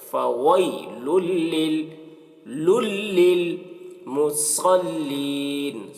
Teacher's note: واو کو ہونٹ سے ادا کرتے ہیں